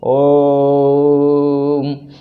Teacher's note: देखिए कितना खिंचाव हो रहा है, कितना समय ले रहा है, ह्रस्व स्वर से तिगुना समय ले रहा है। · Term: प्लुप्त स्वर